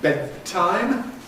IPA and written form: ˈbed̚taɪm (bedtime)